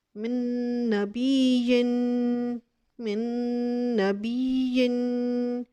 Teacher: अब देखिए अब आ जाए नून की तरफ। अब नून, अब इधर नून को हम नून के साथ मिलाएंगे तो अदगाम करेंगे, इदगाम बिल गुन्ना करेंगे।